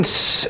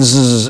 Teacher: The only difference between those two is on voice. Zzz is voice. And why zzz goes and makes all the vibration is because these vocal cords, if you will, the walls, they come in like this, and therefore they cause greater vibration.